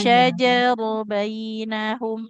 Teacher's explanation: shin itu tengah lidahnya menempel ke langit-langit mulut atas.